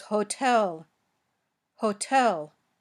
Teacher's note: it was the puffy T because the syllable after T is stressed